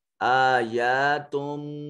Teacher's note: اس کے بعد با حرف اقلاب آ گیا تو اس نون تنوین کی جگہ یہ چھوٹی میم پڑھی جائے گی